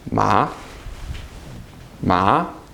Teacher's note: it's a rising tone. Your voice goes up. If you lift your eyebrows up as you say it, like you're really surprised, you'll hit it. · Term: second one